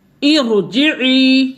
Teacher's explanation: تو اس لیے ارجعی جب کسرہ عارضی آ جائے گا تو را ساکن ہوگی، اس سے پہلے کسرہ عارضی ہوگا تو بھی را کو یعنی کہ پر اور موٹا پڑا جائے گا